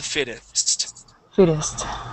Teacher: So here we can actually switch the double T to a D sound.